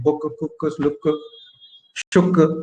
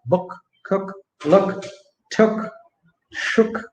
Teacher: the Indian U is from the front part of the mouth, like book, cook, look, shuk. But the neutral U would be slightly from the back of the mouth